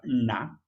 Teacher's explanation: la nasal cerebral, lengua hacia arriba